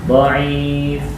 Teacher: Kalau dhaif pakai ain, tenggorokan tengah.